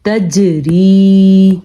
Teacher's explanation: جیم حروف قلقلہ میں سے ہے، اس لیے ہم نے یہاں پہ جھٹکا دے کے پڑھا ہے